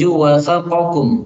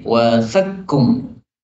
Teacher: Qafnya lebur masuk pada kaf. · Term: idgham